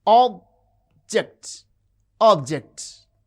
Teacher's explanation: The first syllable has prominence.